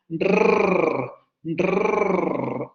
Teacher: Cuando nosotros pronunciamos rrr, la lengua o la punta de la lengua se va hacia la zona de los alvéolos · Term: vibrante múltiple alveolar